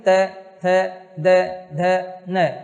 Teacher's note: त, थ, द, ध, न, जीभ दांत के स्पर्श करती है।